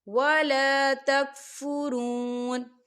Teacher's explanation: فرون، یہاں دیکھیں واو ساکن ہے، واو ساکن سے پہلے پیش ہے، تو یہاں پر واو مدہ ہو رہا ہے، تو ہم اسے 2 حرکت کے برابر کھینچیں گے